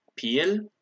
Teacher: bekal becomes pil with a rising tone